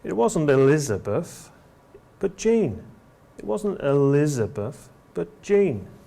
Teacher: We use fall rise when we're contradicting the information we've just heard.